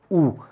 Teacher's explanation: उ का उच्चारण स्थान ओष्ठ्य होता है